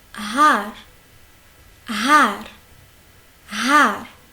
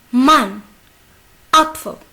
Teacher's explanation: C'est une longue A, presque une A et demie.